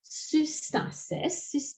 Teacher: In most dialects, and that includes Attic, a nasal, a sound like n, disappears before a sigma. So if you've got a formation like sustasis, literally standing together, placing together, that's soon plus stasis, the nu disappears.